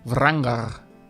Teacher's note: the R's at the end of a name, more rolled with the back of the tongue towards your throat